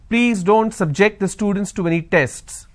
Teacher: here my stress has moved to the second syllable